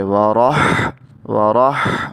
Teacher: جب را کو ہا سے ملائیں گے، را زبر ہا رح، تو ہا میں حلق سے ہا کو ادا کیا جائے گا. اس میں ہا ایسے سانس کی آواز دیں گے